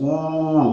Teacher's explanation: it is back, close, rounded, long. Yeah, all right, back, close, okay, rounded, long sound.